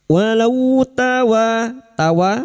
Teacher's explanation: Walau fathah bertemu waw sukun kita lunakkan huruf lin seperti bertemu dengan huruf abjad u. Walau tawa fathah bertemu alif 2 harakat mad tabi'i.